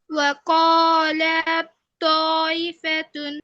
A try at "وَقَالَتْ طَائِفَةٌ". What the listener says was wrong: আপু খেয়াল করি ওয়াকালাত লামে টান হয়ে যায় লামে তো টান হবে না আপু ওয়াকালাত ওয়াকালাত তাইফাতুন